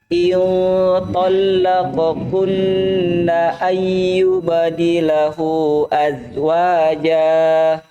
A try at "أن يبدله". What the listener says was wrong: ibdilahu panjang.